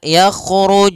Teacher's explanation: dipahami yang pertama adalah sifat jaharnya dan kedua sifat E syiddahnya jahr itu tertahannya nafas kalau syiddah adalah tertahannya suara maka luu harus tertahan